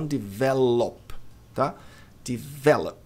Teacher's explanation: Quando as palavras terminam com OP, OD, a tendência é que o O tenha som de E átono.